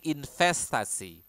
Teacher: So instead of a V, you would hear people using this word invest with F.